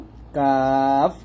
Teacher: কাফ আমরা জিহ্বার গোড়া হতে একটু আগে বাড়াবো, তার বরাবর উপরে তালুর সঙ্গে লাগাবো, পাতলা করে উচ্চারণ করব